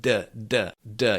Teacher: When you say d, the blockage of the air actually happens when the front of your tongue touches the palate right behind your teeth.